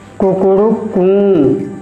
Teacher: कुकुड़ू कूं कहने में जैसे आपने मुर्गे की आवाज़ सुना होगा तो प्रारंभ में वह क्या करता है? धीरे बोलता है, फिर उसके बाद में मध्यम स्वर तक जाता है, फिर उसके बाद में उच्च स्वर तक जाता है, फिर उसका नीचे आवाज़ जाता है। यह है उदाहरण प्लुत स्वर का।